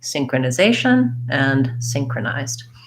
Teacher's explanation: the zed says the z sound and the d sound right together